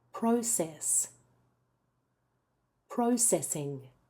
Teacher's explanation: I often hear them putting the stress on the second syllable for the verb. The stress is almost always on the first syllable in this word for both the noun and the verb.